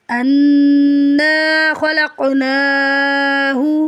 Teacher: کھینچے پڑھیں گے، انا خلقناہ، حمزہ کو نون سے ملائیں گے، نون میں شدت ہے، غنہ ہوگا، 2 سے 3 سیکنڈ ناک میں آواز کو ٹھہرائیں گے ، نون کی زبر کے بعد الف خالی ہے، الف مدہ · پر پڑھیں گے، خواہ کی زبر کو بغیر کھینچے پڑھیں گے، لام کو قاف سے ملائیں گے، قاف ساکنہ قلقلہ ہوگا، قاف حروف مستعلیہ میں سے ہے، پر پڑھیں گے